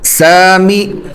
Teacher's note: سین الف زبر سا، میم زیر می، سامی. سین کو کھینچنا ہے ایک الف کے برابر، اور میم پہ صرف زیر ہے، اس کو نہیں کھینچیں گے